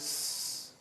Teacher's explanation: But when you say cats, the pluralizing sound is s, like that. No vocalizing, no vibration of the vocal cords.